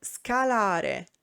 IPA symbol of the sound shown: sk